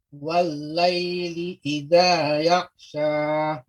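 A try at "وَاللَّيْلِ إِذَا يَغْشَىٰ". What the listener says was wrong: Untuk pengucapan ghain Pak, tidak terlalu cepat. Yag, tidak langsung yag, tapi yaghsha, yag, ya, yaghsha. Wal-laili idza yaghsha.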